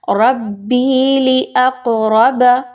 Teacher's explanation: قاف حروف قلقلہ میں سے اس کو تھوڑا سا ہلاتے ہوئے پڑھیے